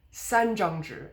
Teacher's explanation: 张 is the first tone, so you pronounce it a bit lower than the 三.